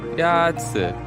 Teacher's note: The first tone is a high, level tone.